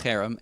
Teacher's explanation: the guttural Harem accent on the first syllable